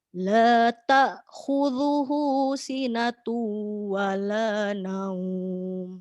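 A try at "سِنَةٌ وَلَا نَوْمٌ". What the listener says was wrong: Oke, sinatu lebih lama. Sinatu wala naum.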